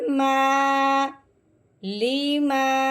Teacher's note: ہم نے کیا پڑھا ہے کہ الف سے پہلے حرف پہ جب زبر آ جائے تو اس کو اس کے ساتھ ملاتے ہوئے، یعنی کہ میم کو الف کے ساتھ ملاتے ہوئے ہم نے اس کو ایک الف کے برابر لمبا کرنا ہے